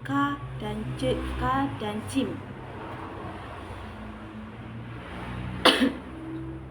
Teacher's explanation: infitah atau terbuka, lidah tidak melekat ke langit-langit mulut